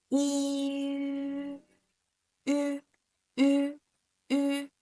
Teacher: to make this sound you have to actually say i but close your lip in between to make the u sound